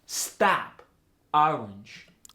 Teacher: goes to the a sound it tends to be an intense unrounded sound in the lower part of the mouth